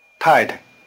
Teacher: The tones are falling neutral. The weak, short, neutral tone has a low pitch.